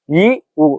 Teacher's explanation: ஐ இ ஒரே சவுண்ட்ல முடியுது, அவு உ ஒரே சவுண்ட்ல முடியுது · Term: இணை எழுத்து